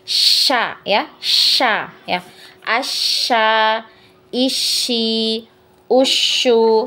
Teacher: Jadi dia aliran nafasnya itu banyak ya untuk huruf shin ya, dia menyebar ya. Kemudian juga udaranya menyebar ya ke seluruh mulut.